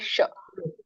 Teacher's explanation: ಬಾಯಿ ನಾಲಿಗೆ ಮೇಲಿನ ಅಂಗಳಕ್ಕೆ ಹತ್ತಿದಾಗ ಏನು ಬರುತ್ತಲ್ಲ ಶಬ್ದ ಅದೇ ಷ